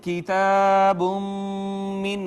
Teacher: ما قبل نون تنوین کو میم نے اپنے اندر ضم کر لیا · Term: ادغام بالغنہ